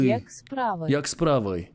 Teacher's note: And the [i] sounds like a [ɨ]